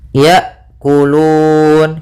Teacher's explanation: Kemudian pada lafal hamzah harus jelas hamzahnya ya, karena hamzah sifatnya ada sifat syiddah dan sifat jahar, yaitu tertahannya nafas dan tertahannya suara